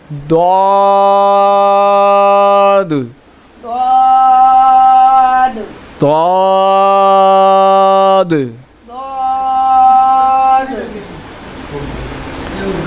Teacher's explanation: ضاد جو ہے زبان کی کروٹ اور اوپر کے داڑھوں کی جڑ سے ادا ہوتا ہے۔ اس کو اسی انداز سے پڑھیں کہ زبان کی جو کروٹ ہے، زبان کی کروٹ جو ہے اس کو جو ہے اسی انداز سے گھمائیں، زبان کی کروٹ اور اوپر کی داڑھوں کی جڑ سے ادا ہوتا ہے۔